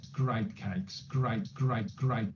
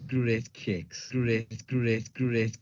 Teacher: it's a diphthong it's a vowel sound that starts ah and ends up e · A Brummie is going to have a sound that's kind of similar to a London sound. It's a diphthong. It's a vowel sound that starts and ends up E, moves from I, it takes a journey.